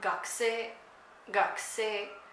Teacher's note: So for student, you start low and you go up. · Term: pitch accent